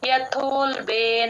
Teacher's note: యథోల్బే ఆ బ కి మహాప్రాణం ఉండదు యూజువల్ గా చేసే మిస్టేక్ ఏంటంటే బ కి మహాప్రాణం పెట్టేస్తారు యతోబే అనేస్తారు